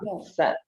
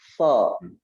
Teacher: Bedanya dengan huruf sin adalah dengan menaikkan pangkal lidah. Karena huruf sad ini adalah salah satu huruf yang mempunyai sifat isti'la.